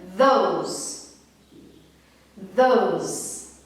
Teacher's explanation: som do TH voiced, tá? Onde ele é produzido com a corda vocal